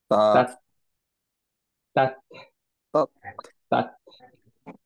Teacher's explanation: Sharp stop করলাম, টাংটা নিচে করলাম, বাতাসটা বের করলাম।